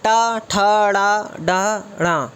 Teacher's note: टा वर्ग आता है जो कि बोला जाता है मूर्धन्य से, मूर्धन्य से। और मूर्धन्य आपको दिख रहा होगा चित्र में, मूर्धन्य ये आपके मुख के ऊपर वाले भाग से सम्मिलित है।